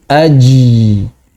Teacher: orang-orang Arab hari ini kebanyakan mengucapkan jim dengan bainiyah sehingga suaranya menjadi aji